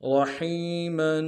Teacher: میم کے اوپر تنوین غنہ کریں گے